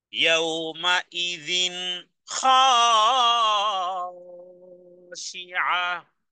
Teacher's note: ইয়াউমাইযিন তানবিনের পরে খ আছে, এজাহারের অক্ষর গুন্না ব্যতীত পড়তে হবে